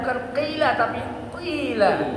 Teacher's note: Itu isti'la ya. Nah, huruf isti'la ini sekalipun berharokat kasrah harus ada sifat tebalnya. Itu yang disebut tafkhim nisbi.